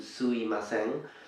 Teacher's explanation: Some Japanese speakers kind of omit the M in between, changing it into suimasen, but it's not really proper, and it is better to pronounce it anyways.